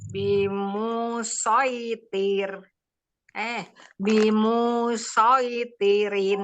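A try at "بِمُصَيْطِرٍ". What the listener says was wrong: Tidak panjang. Munya tidak panjang. Bimusoitirin. Munya pendek.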